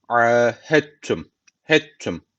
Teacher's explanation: h harfi direkt tü harfine bağlanıyor tü harfi şeddeli okunuyor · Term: idamı mütecanis